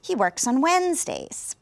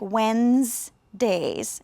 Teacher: the word Wednesdays is actually a difficult word you notice the D is not really pronounced when and then that e isn't really pronounced either it sounds